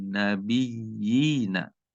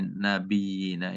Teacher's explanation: di nabiyyina ini kita baca tasdidnya dulu nabiyyi, kemudian ditambah dua ketukan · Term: mat tamkin